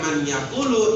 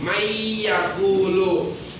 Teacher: Kalau baca secara yang benar itu secara tajwid bacanya bukan man yakulu tapi may yakulu. Nunnya masuk ke dalam suara ya dengan dengung. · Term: idgham bi gunnah